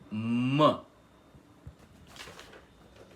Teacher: Aquele que é pronunciado com os lábios se tocando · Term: fonema M